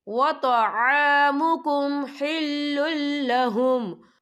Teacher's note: لام جو ہے حروف یرملون میں سے ہے تو یہاں پر ادغام ہوگا، تو یہاں بھی ہم بنا غننے کے پڑھیں گے